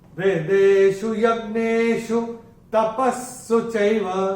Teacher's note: पहले चरण में प के बाद विसर्ग के बाद का अक्षर है स, और विसर्ग के बाद अगर श, श या स आता है तो विसर्ग का उच्चारण श, श या स होता है। और चूंकि यहाँ पे स आया है तो विसर्ग का उच्चारण आधा स होगा